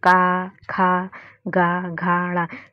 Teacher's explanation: घ का उच्चारण स्थान जो है हमारा कंठ रहेगा